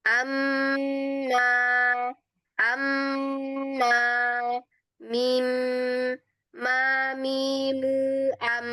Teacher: Makhrajnya dari kedua bibir dengan cara dikatupkan dan ada gunnahnya di situ ya. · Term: huruf mim